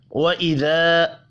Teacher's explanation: अलिफ मद्दा है, एक अलिफ के बराबर खींच कर पढ़ेंगे।